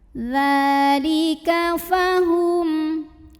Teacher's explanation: Karena ada nun sukun yang bertemu dengan huruf dzal, maka nun sukun dibunyikan samar-samar, siap-siap menuju huruf dzal disertai dengung. Dengung dan samarnya sama ya, karena dzal ini makhrajnya tidak terlalu dekat, tidak terlalu jauh dari nun. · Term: ikhfa awsat